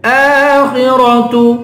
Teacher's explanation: خا اور را دونوں کو پر پڑھیں گے